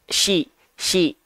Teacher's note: Kalau shin itu dia dilafalkan dari tengah lidah ke arah langit-langit. Sy. Bukan yang ini yang naik, tapi yang ini yang naik.